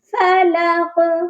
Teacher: فلق اس میں جو قاف ہے وہ بھی نقطوں والا ہے اور اس کو ہم نے موٹا پڑھنا ہے. جب قاف پر ہم رکیں گے، قاف سائلنٹ ہو جائے گا یعنی ساکن ہوگا، تو اس پر قلقلہ بھی لازمی ہوگا